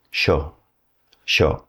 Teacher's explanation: if you're in the southern cone, that Y sound is going to sound more like an SH sound.